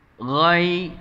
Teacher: Ghai, angkat lidah. Ghairil pangkal lidah terangkat dekat pangkal langit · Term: Ghin